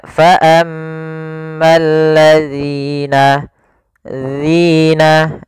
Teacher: ujung lidah kita tempelkan dengan gigi seri atas, agak kita keluarkan sedikit sehingga berbunyi zi. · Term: huruf zal